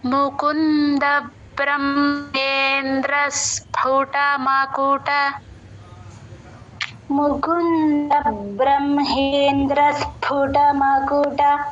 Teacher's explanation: మకుట సు కింద ఒత్తు ప ఉందండి ఆ ప కింద గీత ఉంది ఫ ఎఫ్ లాగా రాకూడదు ప బలో ప ఒత్తు ప వినిపించాలి క్లియర్ గా ఆ సు ని